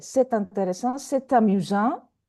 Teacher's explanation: we have vowel, so we have to pronounce T. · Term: liaison